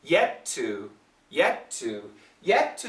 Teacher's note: yet is actually a stop t two is a very clear t